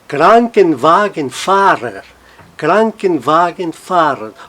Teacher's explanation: O Kranken toma um som um pouquinho mais forte que as demais, mas todas elas mantêm a sua própria sílaba tônica